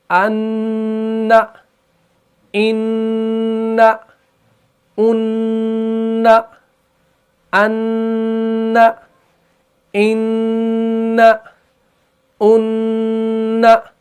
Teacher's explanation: اب کہیں پر جو ہے نون مشدد آ گیا، یعنی نون تشدید کے ساتھ آ گیا، تو وہاں پر آپ نے غنہ بھی کرنا ہے، یعنی وہاں پر آپ نے غنہ زمانی کرنا ہے